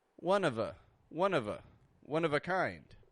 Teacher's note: I'm not pronouncing the F like an F I'm pronouncing it like a V